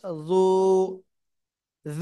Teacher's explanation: জিব্বার গোড়ার কিনারা উপরে মাড়ির দাঁতের গোড়ার সাথে লাগাতে হবে